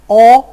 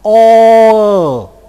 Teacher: And now the remaining cardinal vowels, 14 to 15, are produced with spread lips. So I first of all produce cardinal 6 with rounded lips. O, and then I unround my lips. O. Cardinal number 15.